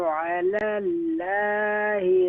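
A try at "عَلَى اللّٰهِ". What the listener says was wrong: Alallahi, Allah name is recite more full mouth.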